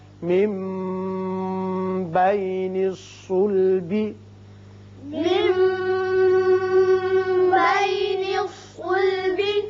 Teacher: نون ساکن کے بعد جب با آ جائے تو وہاں اقلاب ہوتا ہے، میم کی سی آواز نکلتی ہے.